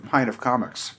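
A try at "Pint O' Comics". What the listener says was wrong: Oh, well, first of all, don't add an F to the O. It's an O. You did. You said pint of.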